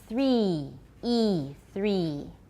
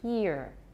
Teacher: the vowel in three should be more like an e than the vowel in here